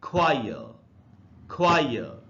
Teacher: British English में last वाले आर का उच्चारण नहीं होता